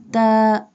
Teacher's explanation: Ta pronounced from the tip of the tongue touching the roots of the top two front teeth.